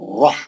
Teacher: رح را موٹا پڑھ کے ہا صحیح پڑھیں گے